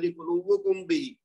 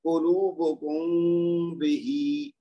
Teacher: ادائیگی صحیح نہیں ہوئی۔ تو آپ کیا کریں گے، قلوبکم بہی، میم کو بس تھوڑا سا لمبا کیا اور وہ خود بخود غنہ ہو جائے گا